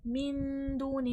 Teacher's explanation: मिन में इख्फ़ा हो रहा है, दू में वाव मद्दा है।